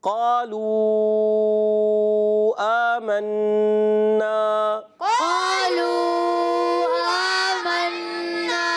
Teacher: واو مدہ کے بعد حمزہ دوسرے کلمے میں آنے کی وجہ سے پھر مد منفصل ہو جائے گا مد کو کھینچیں گے